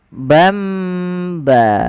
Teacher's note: An In Un bertemu setelahnya satu huruf saja yaitu huruf ba Maka nanti suara nunnya dirubah atau suara Tan dirubah menjadi mim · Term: iqlab